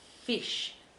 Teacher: tend to bite your lip a little bit for that fish notice my bottom lip is caught in my teeth